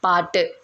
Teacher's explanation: வல்லின உகர எழுத்துக்கள் வந்து இறுதியில் வரும்போது அதோட ஒரு மாத்திரை அளவில் இல்லாமல் அரை மாத்திரை அளவாக குறைந்து ஒலிக்குது. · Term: குற்றியல் உகரம்